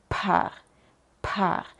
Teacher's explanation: si dices par y pones tus dedos tu mano Enfrente de tu boca puedes sentir como sale mucha aire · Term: la p en alemán